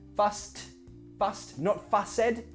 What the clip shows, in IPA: fʌst